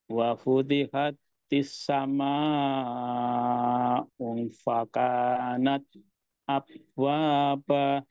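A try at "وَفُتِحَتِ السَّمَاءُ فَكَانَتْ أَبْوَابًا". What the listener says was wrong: Ya, tinggal dipantulkan sedikit. Abwaba.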